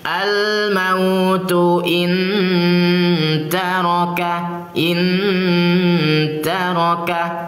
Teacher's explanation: di sini ketika ada nun sukun bertemu dengan huruf ta ya nun sukun bertemu dengan huruf Ta Maka ingat cara membacanya disamarkan dan didengungkan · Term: Ikhfa Hakiki, ikhfa hakiki